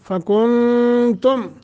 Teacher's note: فکنتم نون ساکن کے بعد تا حروف اخفا میں سے ہے، اخفا کریں گے